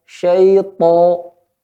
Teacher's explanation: Ya, pada ya-nya jangan syai, tapi syai. Ya sukun sebelumnya fathah, di situ memiliki sifat lembut.